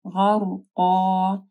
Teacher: غین کو موٹا پڑھنا ہے، را ساکن ہے، اس سے پہلے غین کے اوپر زبر ہے تو را بھی موٹی پڑی جائے گی · قاف کو موٹا پڑھنا ہے، پھر دو زبر کے اوپر جب ہم لوگ وقف کریں گے تو ایک زبر ہٹ جائے گی، غرقا.